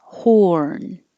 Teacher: You have to round your lips for the O.